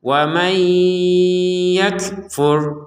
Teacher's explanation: Karena ada digabungkan sama ya. Kalau digabungkan menjadi masuk nun sukun ke ya disertai dengungan. Jadi waman, kemudian kalau digabungkan waman yakfur, seperti itu.